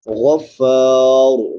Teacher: غین بھی پر پڑھی جائے گی اور را بھی پر پڑھی جائے گی